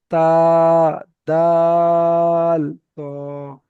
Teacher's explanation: জিভের আগা এবং সামনের উপরে দুই দাঁতের গোড়ার সাথে লাগিয়ে উচ্চারিত হয় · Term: 11 নম্বর মাখরাজ